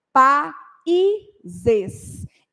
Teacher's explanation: esse I tem som completo, não é semivogal, tá? Então, por ele não ser semivogal, eu tenho que separar o A e o I.